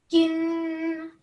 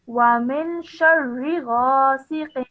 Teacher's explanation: hold the sound of noon at the end for 2 seconds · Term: noon gunna rule